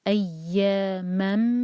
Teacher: فریق منہم۔ نیکسٹ ہے ایاما، تو یہاں من نہیں پڑھیں گے، سلائڈنگ تنوین کے بعد میم آ رہا ہے، ادغام غنہ کے ساتھ